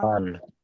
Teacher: তাহলে আনটা কোথায় লাগলো, জিভের আগাটা উপরের তালুতে লাগলো, তার বরাবর উপরের তালুতে লাগলো, এটা আন দেখেন আপনার জিভের আগা উপরে তালুতে লাগছে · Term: নুনের মাখরাজ